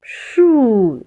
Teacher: I'm pushing air of my mouth and I'm not getting a vibration for my vocal cord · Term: SHU consonant sound